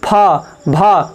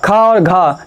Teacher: ज़्यादा सांस क्या हो रही है, मुख से बाहर आ रही है, तो उसे क्या कहते हैं महाप्राण